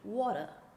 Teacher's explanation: in new york right they don't pronounce the r